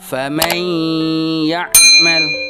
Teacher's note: Suara nun sukunnya dimasukkan ke dalam suara huruf ya. Seakan-akan nun sukun dan ya itu menjadi satu. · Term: idgham bi guna